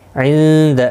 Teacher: نون ساکن کے بعد حروف اخفا کا دالہ اخفا حقیقی ہوگا